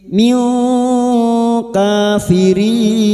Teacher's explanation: kita samarkan bunyi kasrah tanwin dan mendengung selama tiga harakat